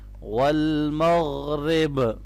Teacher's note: یہاں غین کو موٹا پڑھنا ہے اور را کو باریک کرنا ہے